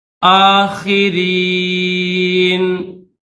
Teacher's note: یہ نون کے اوپر زبر ہے، لیکن یہاں پر جب ہم وقف کریں گے، یہ وقف کی نشانی ہے، وقف کریں گے تو یہ زبر نہیں پڑھیں گے، صرف نون کی آواز پیدا کریں گے